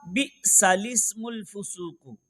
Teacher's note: اس میں لام سے پہلے لام کے بعد دونوں الف نہیں پڑھنے ہیں